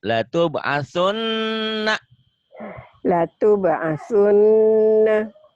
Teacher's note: Kalau tadi huruf gunah ada 2, cara bacanya dibaca double, dengung ke hidung, ditahan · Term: Nun bertasdid